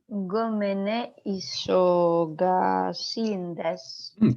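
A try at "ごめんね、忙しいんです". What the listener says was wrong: Good. Isogashi desu. Yeah, good. There you go.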